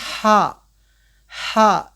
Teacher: इसको हम प्रोनाउंस करेंगे हा जो दरमियानी हल्क से अदा करते हैं